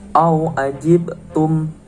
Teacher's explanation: Yang pertama, au ajibtum, terdapat hukum bacaan qalqalah, yaitu adanya huruf qalqalah ba sukun di tengah-tengah kalimat. Cara membacanya yaitu memantul.